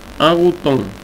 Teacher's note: Tenemos la vocal con el acento grave, entonces bajamos la vocal y decimos a.